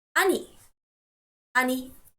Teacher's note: please make sure that you stress the syllable knee